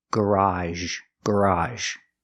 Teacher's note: it's an open Sound ah like hot and stop plus a sound the sound Z we see in words like · it's like the sh sound sh sh but we make a voice SH